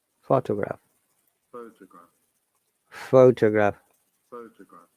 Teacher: As you see, in photograph, we're stressing on the first syllable. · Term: word stress